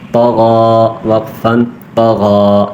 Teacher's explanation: غین کھڑا زبر غا، کھڑا زبر ایک الف کھینچیں گے